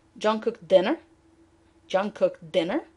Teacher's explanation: so the focus is on dinner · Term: prominence